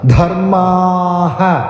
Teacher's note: ധ മഹാപ്രാണാക്ഷരം ആയതുകൊണ്ട് ബലപ്പെടുത്തി ഉച്ചരിക്കുക ധർമ്മാഹ അവിടെ ദീർഘാക്ഷരമാണ് ധർമ്മാ എന്ന് ദീർഘമായിട് ഉച്ചരിച്ച് വിസർഗ്ഗം ചൊല്ലി നിർത്തുക ധർമ്മാഹ